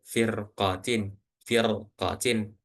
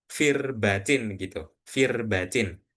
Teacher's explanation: Maka ro yang di tengah ini dibaca tebal.